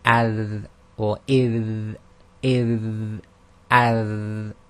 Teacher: The dal is done with the tongue between the upper and lower incisors.